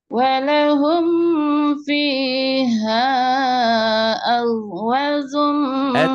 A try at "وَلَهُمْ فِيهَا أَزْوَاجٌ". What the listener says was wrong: Salah, wa-nya panjang. Tuh, jumnya keras. Aznya rapuh.